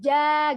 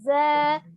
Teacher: Kalau jim, ja itu walaupun ujung lidahnya ini terhampar karena kan dia sama-sama istifal ya. Tapi dia tengah lidahnya ini mengangkat ke langit-langit tengah kalau jimnya.